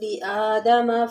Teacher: لام کو باریک پڑھیں گے، اس کے نیچے زیر ہے اور حمزہ پہ کھڑا زبر ہے لِآدَمَ فَسَجَدُوا، یہاں پر مد ہے إِلَّا إِبْلِيسَ، ابلیس میں با ساکن ہے، یہاں پر کلکلہ کریں گے۔